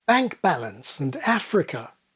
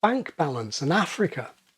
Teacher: young media types practically overnight had started pronouncing words like trap with something that she thought sounded like her strut vowel she would have said something like bank balance and Africa and